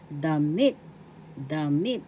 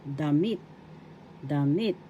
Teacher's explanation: Damit, damit, first syllable da, second syllable mit. The accent is in the second syllable